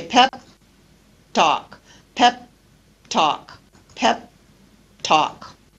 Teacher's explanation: I don't release the final P I leave my lips together · stop consonant or stop plus africat consonant and in this case the first stop consonant is not released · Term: unreleased consonants